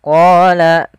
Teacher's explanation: kemudian qo kita panjangkan sebanyak dua harakat karena Dia ada bacaan mad thabi'i yaitu ditandai dengan adanya fathah · Pada lafal bacaan qala, ini tebalkan huruf qafnya. Dari mana makhraj daripada huruf qaf, yaitu pangkal lidah kita menempel dengan langit-langit atas. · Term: mad tabi'i